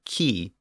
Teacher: The Romans didn't have that sound, or the letter chi. So since it was a breathy or aspirated K sound